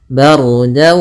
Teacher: ra-nya tebal yaitu ra takhim karena sebelum ra sukun ada huruf berharakat fathah